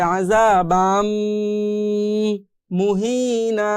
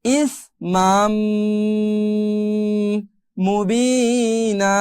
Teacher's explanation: এই যে আমরা মিলাই পড়তেছি না, বানটাকে বাম বলতেছি, মিমের সাথে মিলাই দিচ্ছি, এটা বিলাই দেওয়ার সময় একটু গুণনা করতে হবে, আযাবাম মুহিনা, এভাবে।